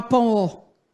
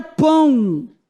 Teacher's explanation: o A é vogal e o O passa a ser semivogal, porque ele tem som de U